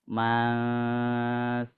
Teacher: Dan nun sukun, terus nun sukun tersebut bertemu dengan yang tadi, yang huruf diantaranya 15. Maka dibacanya disamakan dengan yang hukum mim bertasydid. Jadi dibacanya ditahan ya. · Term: ikhfa hakiki